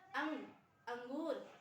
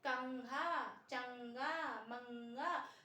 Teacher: जब आप इनका उच्चारण करते हैं कंघा, चंगा, मंगा, तो उस स्थिति पे आप जो ये बिंदु लगा देते हैं मात्रा के रूप में अनुस्वार का, अंग का, तो यही उच्चारण स्थान इसका कहलाता है नासिक्य, क्योंकि हम नाक से बोलते हैं